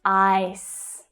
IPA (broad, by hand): aɪ